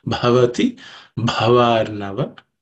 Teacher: the first letter Bha is aspirated, same as the first one.